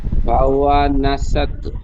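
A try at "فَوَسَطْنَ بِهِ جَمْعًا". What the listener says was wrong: ফাওয়া নাসাত হবে না, ফাওয়াসাত।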